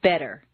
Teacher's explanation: the double T in better is pronounced D, better. Any other pronunciation will sound foreign, strange, wrong, or different to a native speaker.